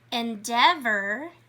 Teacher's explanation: it's the EA spelling pattern, but we're not hearing the A. We're only hearing the E alone sound.